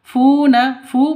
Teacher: Funa fu panjang juga dua ketukan karena ada wau mati diawali dengan dam dommah mad asli atau mad thabi'i.